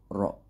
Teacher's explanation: sifat yang mencirikan huruf ro itu taqrir yaitu huruf yang bergetar bergetar tidak lebih dari dua kali